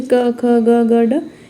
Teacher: इनका उच्चारण जो है कंठ से होता है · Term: क वर्ग